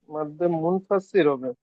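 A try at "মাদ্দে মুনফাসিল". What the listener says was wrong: মাদ্দে মুনফাসির না মাদে মুনফাসিল বলেন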